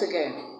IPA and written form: ə'ɡen (Aɡain)